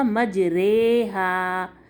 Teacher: آپ نے اس کو پڑھنا ہے را کھڑی زیر رے, ری نہیں پڑھیں گے اس میں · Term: امالہ